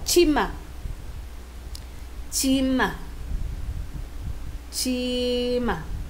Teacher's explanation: Pag sinabi natin aspirated, that is, meron siyang H sound.